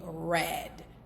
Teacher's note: when you're pronouncing red, your tongue is raised and it's slightly curled